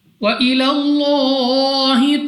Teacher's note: لام اف اللہ سے پہلے حرف پر زبر، تو اس لام اف اللہ کو پر یعنی موٹا پڑھیں گے · را ساکن سے پہلے پیش، را کو موٹا یعنی پر پڑھنا ہے۔ واو ساکن سے پہلے پیش واو مدہ، مگر وقف میں را کو کر دیں گے ساکن، اور اس واو مدہ کو مد عارض کے ساتھ بدل کر 3، 4 یا 5 سیکنڈ تک کھینچ کر پڑھنا ہوگا